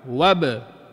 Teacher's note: Huruf ba bibir kita kalau sebut huruf ba kena rapat. Betul. Bila sebut rapat lepas balik.